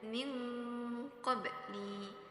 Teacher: di situ terdapat nun sukun bertemu dengan huruf qof jadi cara membacanya itu harus dengan dengung